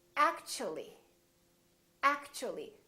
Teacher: the T becomes kind of a CH sound